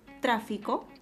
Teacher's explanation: Por ejemplo, si observamos la palabra tráfico, vamos a notar de que la mayor fuerza de voz está en la antepenúltima sílaba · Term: acento